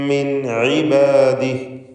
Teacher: അലാ കസീരിൻ മിൻ ഇബാദിഹി മിൻ എന്നതിലെ സാക്കിനത്ത് അനൂൻ ശേഷം ഐന് വന്നതുകൊണ്ട് ഇൽഹാർ ഹൽക്കി നൽകി മണിക്കാതെ വെളിവാക്കുക